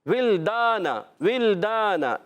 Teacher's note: لام کو لام سے ملانا ہے, لام کو ہلانا نہیں ہے. پھر ولدان, ولدان ولدان, یہاں پر بھی دوسرے لام کو نہیں ہلانا, پہلے لام کو بھی نہیں ہلائیں گے.